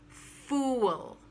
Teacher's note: syllable full or a little longer fool sounds a little double you might want to slip a little w sound into the last syllable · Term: round oo